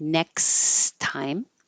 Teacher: just no double T, just one T sound. So it sounds like next time.